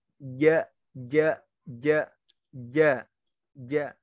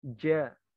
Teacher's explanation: Kalau jalurnya Mesir dan Yaman, becek jimnya. Ja. Tapi bukan C ya. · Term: sifat ta'tis